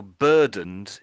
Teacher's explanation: although it's e d, the sound I'm making at the end is just a d sound. Although it's e d, I'm just making it a duh, I would say.